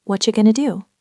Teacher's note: What and are and you have all melted together into whatcha. This is a very common form of connected speech where the t and the y sounds combine to make a chess sound.